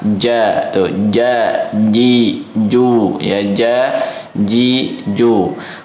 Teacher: huruf jim keluarnya dari tengah lidah